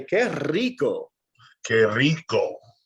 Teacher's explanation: Spanish is famous for this exaggerated R sound, or the rolling of the R.